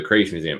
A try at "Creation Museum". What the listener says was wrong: it might have been that you were talking fast, but you didn't pronounce the word Creation Museum. You said Crazy Museum.